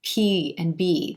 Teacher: the air and then release it like the p and b the air stops by the lips coming together and then it's released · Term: stop consonants